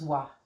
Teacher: He doesn't say va, he says wa, because he lives in an Arabic language environment